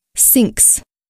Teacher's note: The pronunciation of this plural ending is s, because the ending sound that precedes it, k, is voiceless.